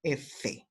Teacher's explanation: Labiodentales, el labio inferior se toca con los dientes. El labio inferior se toca con los dientes superiores de la boca.